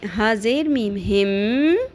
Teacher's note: ہا زیر میم ہم, اور میم کے اوپر تشدید ہے تو یہاں پہ ہم غنہ بھی کریں گے. ہا زیر میم ہم, میم کی آواز کو ناک میں ٹھہرائیں گے, لمبا کریں گے.